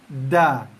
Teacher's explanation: Tekan lepas da. Hujung lidah sentuh belakang gigi kapak, gigi atas, gigi kacip atas, tekan da.